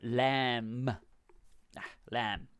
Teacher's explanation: so just be careful when you pronounce that b it's silent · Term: b is silent